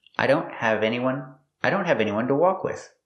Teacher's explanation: The T in don't is a stop T. The tongue goes up, but you don't release it.